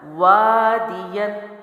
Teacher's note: وا میں نے لمبا کیا کیونکہ الف مد ہے، دال زیر میں نے جلدی چھوڑا کیونکہ پڑی حرکات میں سے ہے۔